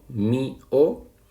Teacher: Formarían dos sílabas, entonces hay un hiato. Y en mío hay una débil y una fuerte, pero vemos que la fuerza recae sobre la débil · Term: hiatos